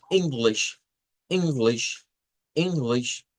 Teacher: Que la sílaba tónica de esta palabra está con una vocal y corta, como en silver. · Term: silver pin